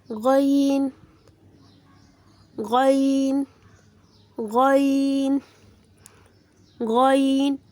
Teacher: غین غین غین غین حلق کے شروع حصے سے ادا ہوتا ہے۔